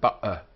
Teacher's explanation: Sometimes it has the force of a glottal stop, as in the sound we have in ba'a, where the air stops and starts suddenly.